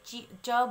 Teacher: च के साथ हमारी जिह्वा ऊपर तालु पे टच होती है, तो इनको बोलने के लिए हमें तालु का प्रयोग करना पड़ा।